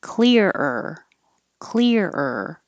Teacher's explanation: you have to take a little break because the er sound is repeated and if you don't take a little stop then it'll just